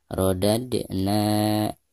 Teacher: dianggap Qalqalah Sugra dan harus dibaca dengan suara pantulan yang ringan. Rodadna. Adapun pembacaan "na" di sini, dipanjangkan dua harakat karena dianggap Mad Thabi'i atau Mad Asli. · Di sini ada dal sukun sekaligus posisinya ada di tengah-tengah bacaan, maka dihukumi qalqalah sugro dan dibacanya harus dipantulkan dengan suara pantulan yang tipis.